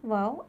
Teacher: दोनों होठों को गोल करने से वाव अदा होती है